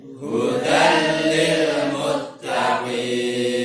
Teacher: hudan tanwin ketemu dengan lam, dia memang idgham tapi tidak didengungkan.